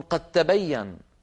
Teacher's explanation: ولا ينطقون الدال ولا يقلقلونها بل يجعلونها تاء ويدغمونها في التاء التي بعدها فيقولون قد تبين ولو قلت امام العربي قد تبين لضحكوا وقالوا